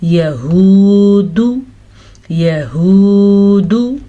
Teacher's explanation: दाल को लंबा नहीं करना, लेकिन वाव मद्दा को लंबा करना है